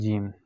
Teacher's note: زبان کی درمیان جب آپ کے تالو کے ساتھ لگتے ہیں تو وہاں سے جیم ادا ہوتا ہے